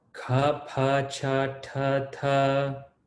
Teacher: Those are all Mahaprana, so a little bit of air